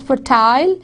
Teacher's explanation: when the words end in an unstressed il, British English speakers pronounce them as a full vowel